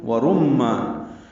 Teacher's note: را کو پر پڑھیں گے کیونکہ اس پر پیش ہے، میم سے ملائیں گے، ادغام یہاں پہ غنہ ہے، میم مشدد ہونے کی وجہ سے را کو میم سے ملاتے ہوئے آواز ناک کے بانسے میں لے جائیں گے، ورمان۔